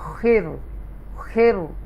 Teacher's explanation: یہ تفخیم کے ساتھ پڑھا جائے گا, بولڈ پڑھا جائے گا. خیر. اوکے, خیر, کیونکہ حروف مستعالیہ میں سے بولڈ لیٹر میں سے خواہ آ گیا اس لیے, تو یہ خیر پڑھا جائے گا بولڈ.